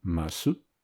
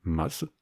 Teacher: le u de ます (masu), verbe auxiliaire marquant la politesse, souvent prononcé /mas/ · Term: amuïssement